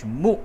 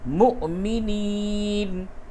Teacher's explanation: مؤمنین یہ واو پہ جھٹکا ہوگا، دیکھیے یہ واو پہ حمزہ ہے اس لیے میم حمزہ پیش مو جھٹکے کے ساتھ